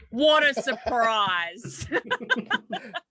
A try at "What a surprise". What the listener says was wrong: See, this is the problem with you fucking Australians not having R's. I was 100% sure you just said water surprise.